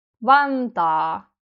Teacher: Long vowel sounds can be also unstressed in Finnish, like in this case, Vantaa, but you still have to say it long.